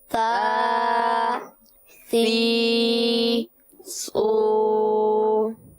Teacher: اس کا مخرج جیسے کہ آپ جانتے ہیں کہ زبان کا سرا اور اوپر کے دانتوں کے اندرونی کنارے ہیں